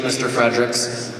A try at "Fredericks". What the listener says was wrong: Okay, first of all, no one puts a D in Fredericks except for my husband.